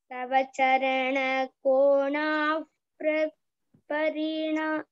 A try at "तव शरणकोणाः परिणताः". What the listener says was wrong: yes it is not चरण it is शरण तव शरण कोणाः परिणताः